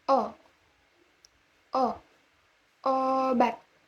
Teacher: Vokal ini dibentuk dengan kedua bibir agak maju ke depan dan agak membundar serta belakang lidah agak meninggi tetapi agak lebih rendah dan kurang bundar daripada U.